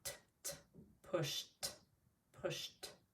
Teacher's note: This sound is not voiced. So when we say pushed, it sounds like t